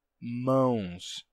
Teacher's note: deixando simplesmente uma nasalidade vocálica então Manus se torna mãos certo a nasalidade desse n vai passar simplesmente a ser uma nasalidade vocálica e o n em si desaparece